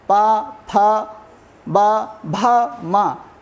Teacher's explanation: जब हम पा बोलते हैं तो हमें अपने होठों को आपस में मिलाना पड़ता है। बिना हम होठों को मिलाए पा का उच्चारण नहीं कर सकते हैं, बिना होठों को मिलाए हम फा नहीं बोल सकते हैं। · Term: ओष्ठ वर्ण